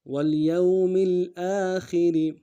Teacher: حمزہ کے اوپر کھڑا زبر ہے، ایک الف دار میں کھینچیں گے. خا کو اور را کو دونوں کو باریک ادا کریں گے